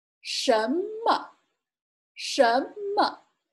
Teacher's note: there's not a tone mark on this one because it's a neutral tone, so it should be pronounced slightly. And the emphasis is on the 什什么 It means what, and it is a question pronoun.